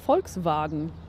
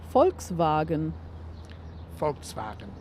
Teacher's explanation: Yeah, so the way you're supposed to say is Volkswagen. So it's more of an F than a V. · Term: unvoiced V